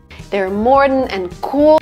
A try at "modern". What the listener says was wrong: بله، تلفظ این کلمه را متوجه باشین که modern، modern تلفظ نمیشه. Like O sound, Mo, it's wrong. مثلا در کلمات hot، stop، father عین صدا وجود داره، پس باید این کلمه انگلیسی را مثل modern، modern، modern تلفظ بکنیم. Modern is incorrect.